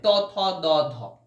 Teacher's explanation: ত থ দ ধ দন্ত ন, দেখো তোমার ওপরের দাঁতে এসে ঠেকছে, জিভটা ওপরের দাঁতে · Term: দন্ত বর্ণ